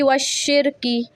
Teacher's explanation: शीन पे तशदीद है, इस पे मैं दबाव दूंगी और 1 सेकेंड रुकूंगी मैं यहाँ पे।